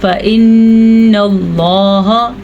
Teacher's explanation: اللہ کے نام کو پر پڑھا ہے ہم نے کیونکہ اس سے پہلے حرف کے اوپر زبر ہے